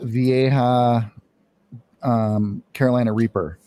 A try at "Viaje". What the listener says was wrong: Oh, the Viaje. You said Vieja. It's close.